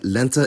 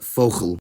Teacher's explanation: /l/ is light /l/ in onset position, and becomes dark [ɫ] in coda position